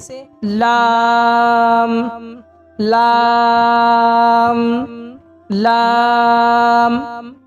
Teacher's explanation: किनारे जबान मसूड़े से मिलकर लाम अदा होता है। कैसे? लाम लाम लाम।